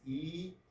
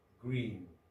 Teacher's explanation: the tongue is very high here when we pronounce e like in green